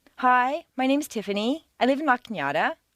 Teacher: a certain segment of the population uses rising staircases